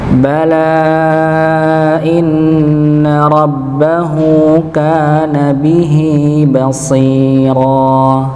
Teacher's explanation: Sama bala inna, ya, di situ ada alif bertemu dengan hamzah, maka dibaca 4 atau 5 harokat